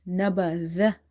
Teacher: Zal is pronounced with the tip of the tongue when it touches the inner edges of your top two front teeth. So never pronounce it like a za.